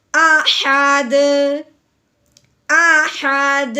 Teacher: دال جب دیکھیں گے تو وہ ہوتا ہے حروف قلقلہ میں سے، تو حروف قلقلہ جب ساکن ہوتا ہے تو حروف قلقلہ کو ہلا کے پڑھتے ہیں۔ اب جب ہم دال کو ساکن کریں گے تو اس کو ہلائیں گے بھی، کیسے؟